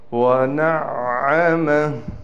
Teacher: عین پر تشدید ہونے کی وجہ سے اس عین پر ٹھہراؤ کیا جائے گا